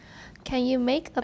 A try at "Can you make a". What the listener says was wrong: Not can you. Watch the N.